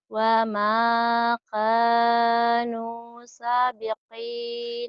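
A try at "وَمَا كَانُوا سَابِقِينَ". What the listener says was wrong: Sanya panjang, ada pemanjangnya, sanya. Wa ma kanu sabiqina.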